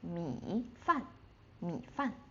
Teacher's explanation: So, we just go low and without the rising part.